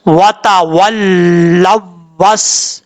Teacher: ہم نے غنہ نہیں کرنا، بغیر غنہ کیے لام کو واؤ سے کنیکٹ کرنا ہے. لام، واؤ زبر، لو، واؤ سین زبر وس، لو وس.